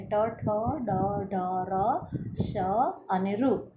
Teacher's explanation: ગળાની ટોપના ભાગમાં, ટોપ લેવલના ભાગમાંથી આનું ઉચ્ચારણ થાય છે, માટે એ મૂર્ધન્ય વર્ણો છે